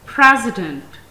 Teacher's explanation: It has three syllables. First syllable has primary stress upon it, as it is pronounced more clearly. Second syllable is unstressed, and the third syllable has a secondary stress upon it.